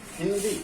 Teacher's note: ही पर ज्यादा जोर लगता है